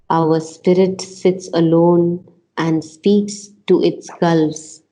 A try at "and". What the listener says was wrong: You want to accent the D a little better. And